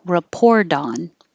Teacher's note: if a word with a vowel comes after it but then the t is between a voiced sound the r and a voiced sound a vowel so then the t would change to a d so report on wouldn't sound like a t it sounds like